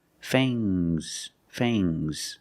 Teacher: Use a long A plus the nasal sound and a soft G.